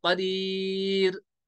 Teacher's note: रॉ साकिन से पहले अगर याए साकिन हो तो रॉ को बारीक पढ़ेंगे